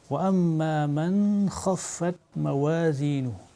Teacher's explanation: on ne cache pas le nun sakin dans la lettre kha. Donc il faut manifester clairement la lettre kha, on va dire وَأَمَّا مَنْ خَفَّتْ مَوَازِينُهُ. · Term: idhar